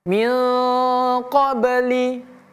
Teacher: nun sukun bertemu dengan huruf qof maka dia tebal ee ikhfa ya dia ikhfa dan dia tebal